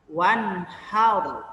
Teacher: Wanhar tidak boleh dibaca dengung ataupun nunnya hilang tidak boleh tapi dibaca jelas. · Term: izhar